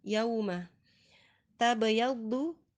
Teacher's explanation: ada ba sukun di tengah kata, sukunnya asli, hukumnya qalqalah sughra, dibaca dengan pantulan yang tidak terlalu kuat dan perlu diingat jangan diberikan penekanan seolah-olah ada hamzah sukunnya.